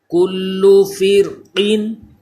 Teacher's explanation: کلو فرقین، یہ را بھی پر ہوگا، کیوں پر ہوگا کہ ہم نے پڑھا ہے کہ اس سے پہلے زیر تو ہے اسی کلمے میں، اس وجہ سے باریک پڑھا جانا تھا، لیکن اسی کلمے میں را ساکن کے بعد حروف مستعلیہ بھی آ گیا ہے، تو جب را ساکن کے بعد حروف مستعلیہ ہو اسی کلمے میں تو پھر اس وقت را پر ہو جاتا ہے، اس لیے اس کو پر پڑھیں گے۔